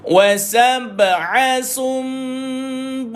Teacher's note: Ada nun, atasnya ada mim. Berlaku bacaan iklab. Menukarkan nun ini kepada mim.